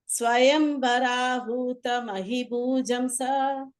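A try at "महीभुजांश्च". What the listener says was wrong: அஹீபுஜாம்ச. அஹீஹி வந்து தீர்க்கம். மஹீபுஜாம்ச.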